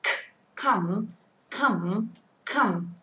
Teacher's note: thì chúng ta sẽ thấy tay của chúng ta không rung khi đọc âm này